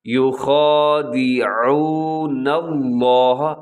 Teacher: یو خا، یو خا، یو خادعو، عین کا خیال رکھنا ہے، عین پہ آپ نے پورا زور لگا دینا ہے کہ عین کا آپ اس کو حلق سے ادا کریں۔ یخادعون اللہ، آگے لفظ اللہ ہے اس کو اپنے موٹا پڑھنا ہے، کیونکہ لفظ اللہ سے پہلے نون کے اوپر زبر آ گئی، تو جب پہلے زبر ہو یا پیش ہو تو لفظ اللہ موٹا پڑھا جاتا ہے۔